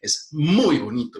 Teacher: esa palabra muy tiene una prominencia acentual muy fuerte